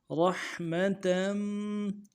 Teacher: را کو حا کے ساتھ ملانا ہے، حا کو گہرائی سے ادا کرنا ہے، میم کو نرمی سے پڑھنا ہے، تا کے تنوین کو آگے میم کے ساتھ ملانا ہے۔